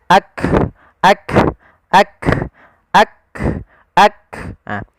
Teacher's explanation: Kaf yang perlu kita bunyikan dulu yang siddahnya yaitu kita tahan suaranya baru kita alirkan nafasnya